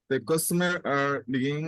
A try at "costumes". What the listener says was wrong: Not the customer. It's not customer. Costumes.